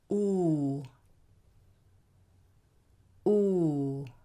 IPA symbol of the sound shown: u: